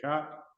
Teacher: Sha, when you say sha, that is murdha, it is called. That is top portion of the mouth.